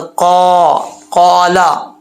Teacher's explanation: آگے چلتے ہیں، قال یا لیتا قومی، قاف کے آگے الف ہے، اس کو ایک الف کی مقدار لمبا کریں گے، قاف دو نقطوں والا ہے، زبان کی جھاڑ اوپر والے تالو کے نرم حصے سے لگے گی تو قاف پڑا جائے گا